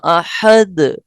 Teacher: آخر میں جو آ گیا ہے نا اس میں زیادہ قلقلہ ظاہر ہو رہا ہے